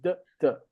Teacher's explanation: If you do phonetics, you know, phonetics is the science of sounds. Actually, these two sounds, the sound d and the sound t, are both pronounced in the same part of the mouth, behind the teeth. The tongue is just behind the teeth.